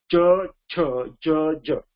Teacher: माझी जी जीभ जी आहे ती वरच्या टाळूला ती प्रेस केली जाते आहे